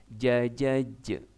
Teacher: huruf ja atau Jim itu ternyata juga Qalqalah jadi harus ada pantulannya